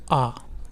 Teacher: और अ जो है आपका यहां से निकलता है मध्य भाग से और जो आ है यह आपका पश्च भाग से निकलता है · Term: पश्च स्वर